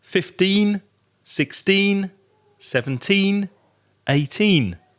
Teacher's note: the stress is on the second syllable so two syllables